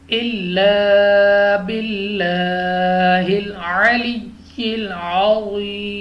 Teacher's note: لام آف اللہ سے پہلے حرف کے نیچے زیر ہے تو ہم نے لام آف اللہ کو باریک پڑھنا ہے نہ کہ پر پڑھنا ہے